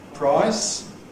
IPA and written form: praɪs (price)